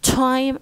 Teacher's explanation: we pronounce them with audible puff of air when they come at the beginning of words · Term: aspirate